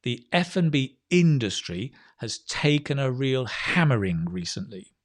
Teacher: you're stressing words like industry hammering um and that phrasing is important where the pause is right